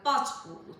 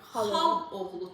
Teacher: Bacının ısı düşür tələffüzdə. Bac oğlu tələffüz olunur.